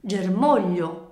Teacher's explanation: parola germoglio che noi sappiamo essere divisa in tre sillabe ger ma io nel pronunciare questa parola la sillaba su cui cade l'accento è mò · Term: vocale tonica